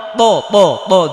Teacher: জিব্বার আগা সামনের উপরে দুই দাঁতের গোড়ায় লাগে, মানে খুব মোটা করে উচ্চারণ করতে হবে।